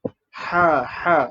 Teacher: Ha tebal. Kita kena tebalkan bunyi angin huruf ha ni. Ha. Jangan buat macam ha nipis.